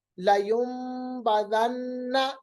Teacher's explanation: نون کو میم میں بدلنا، اقلاب، نون ساکن کے بعد با آ رہا ہے تو اقلاب